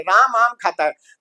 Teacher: अब हम लिखते तो राम है, राम, लेकिन बोलते राम है आधा, ए को उच्चारण नहीं करते। जैसे हम बोलते हैं राम आम खाता है, तो राम म आम ऐसे नहीं बोलते, हम ऐसे नहीं बोलेंगे राम राम आम खाता है, हम उसको फटाफट बोलेंगे राम आम खाता है, तो राम आम खाता है।